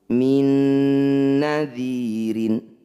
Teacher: Bunyi nun pertama masukkan pada nun kedua. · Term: idgham bi gunnah